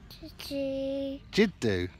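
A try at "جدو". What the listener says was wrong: Jiddu. Jiddu. Jiddu. No, Jiddu, not doo doo. Jiddu.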